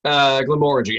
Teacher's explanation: emphasis on the second syllable